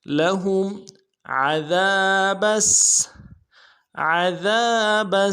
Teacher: عین کو موٹا ادا کریں گے، ذال کو باریک ادا کرنا ہے، ذال کے ساتھ الف مدہ ہے، ایک الف دال میں کھینچیں گے۔